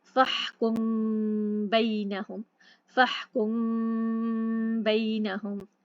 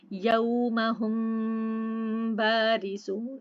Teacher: मीम साकिन की आवाज़ नाक में छुपाकर इजहार और इदगाम की दरमियानी कैफियत में गुन्ना के साथ अदा, यानी खफीफ हल्का गुन्ना होगा। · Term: इख्फा शफवी